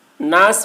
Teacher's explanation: ناس میں نون مشدد ہے، غنہ کریں گے